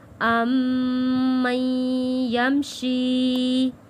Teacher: میم تشدید والے پہ غنہ ادا کیا ہے، پھر ہم میم کو تشدید والے یا کے ساتھ جوڑ کے پڑھیں گے